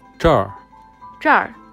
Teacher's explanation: The word 这 can be equal to 这里 But according to their speaking habits, northerners, especially the locals from Beijing, prefer to use the R sound at the end.